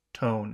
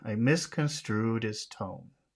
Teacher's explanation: that's a very long syllable, a very long vowel sound again.